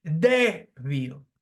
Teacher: That again, there are two syllables here, débil, and the phonetic sound is stressed on the second syllable from the end